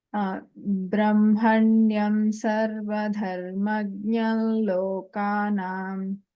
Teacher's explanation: So when you are taking a pause, then the anuswara has to be heard as dharmagnyam ma. If you are choosing to say the whole sentence, then only the anuswara takes a nasalized la sound. · when you're chanting continuously without a break, the anuswara here takes a nasalized la sound.